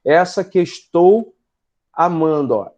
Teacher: e é isso a gente vai chamar de Elisão tá a as duas aparentes sílabas são contadas como uma só